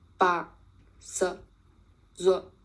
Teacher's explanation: Tone 4 is Yin Ru. This is a checked tone that ends in a glottal stop and is much shorter in duration.